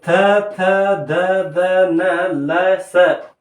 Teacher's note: ನಮ್ಮ ನಾಲಿಗೆ ಬಂದು ನಮ್ಮ ದಂತಗಳಿಗೆ ಸ್ಪರ್ಶವಾಗಿ ಅಕ್ಷರಗಳು ಉತ್ಪತ್ತಿಯಾಗುತ್ತವೆ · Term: ದಂತ್ಯ ವರ್ಣಗಳು